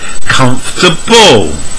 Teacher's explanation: learners usually say comfortable but native speakers reduce it from four to three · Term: disappearing syllables